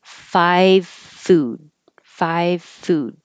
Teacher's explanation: you can make the V but without voicing, and that changes it to an F. So you really don't hear a V at all.